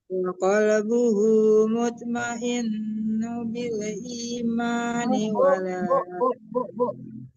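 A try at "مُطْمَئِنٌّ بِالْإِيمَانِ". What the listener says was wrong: Mutmainnum. Nah, itu dong hukumnya iqlab. Ulang dari wa qalbuhu dipantulkan juga to-nya.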